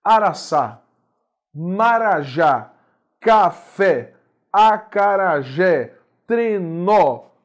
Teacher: a sílaba tônica na última posição na última sílaba da palavra · palavras que são oxítonas, sílaba tônica é a mais forte, é a última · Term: palavras oxítonas